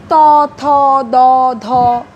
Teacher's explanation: জিভের পাতা একটু প্রসৃত হয়ে দাঁতের সঙ্গে, উপরের পাটি দাঁতের সঙ্গে স্পর্শিত হয় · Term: দন্তধ্বনি